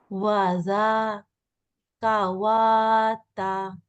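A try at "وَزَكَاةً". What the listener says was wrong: আচ্ছা, এখানে ওয়া জাকাতা, এই ওয়ার উপরে আসলে আলিফটা আসছে। হ্যাঁ, এখানে এইটা ওই আলিফটাই ইউজ হবে, ওয়াটার ইউজ হবে না। যদি ওয়াতে কোনো হারাকা থাকতো তখন আমি জাকা ওয়াতা বলতাম। ওয়াতে কোনো হারাকা নাই, তাই না?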